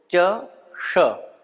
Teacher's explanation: इनमें उच्चारण भेद है और इसका उच्चारण स्थान भी अलग अलग है। अतः जब हम श का उच्चारण करें तो ध्यान रखें कि इसका उच्चारण स्थान तालव्य है, अर्थात च वर्ण का ध्यान करते हुए श का उच्चारण करें।